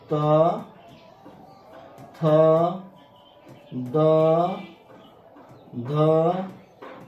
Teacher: ल से ल त से हो गया त वर्ग त वर्ग में त थ द ध और न और दंत स त से हो गया त वर्ग और ल और ये दंत स दंत स से ही स्पष्ट हो रहा है कि इसका उच्चारण स्थान दंत है क्योंकि ऐसे वर्ण का उच्चार उच्चारण करने में हमारे जीभ सीधा दांत को टच करती है